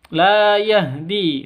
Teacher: La yahdi la panjang dua ketukan karena ada alif sebelumnya fathah atau alif diawali dengan fathah mad asli atau mad thobi'i.